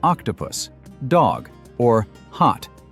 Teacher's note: letter O makes the sound uh like in an octopus, dog, or hot. That's how we say it in most English accents like British English, Australian, and many others. In American English, this sound is often a little different, more like a as in dog.